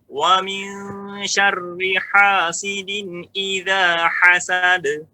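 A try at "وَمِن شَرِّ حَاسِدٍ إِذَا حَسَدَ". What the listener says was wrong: Ya, kan hasad. Ya, hasad. Pantulkan sekalian, jangan de. Hasad. Ya, kenapa saya katakan pantulkan, ya, lepaskan, Pak? Karena seluruh huruf qalqalah, huruf apa, Pak? Jahrun. Apa artinya jahrun? Jelas. Jangan ditahan-tahan, jangan. Hasad, lepaskan, ya.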